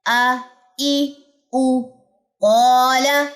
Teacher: قاف موٹا تھا تو اس کے ساتھ الف بھی موٹا پڑا جائے گا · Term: الف موٹا